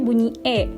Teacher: posisi lidahnya berada di depan dan posisi rahangnya berada di tengah, yang mana berarti mulutnya agak tertutup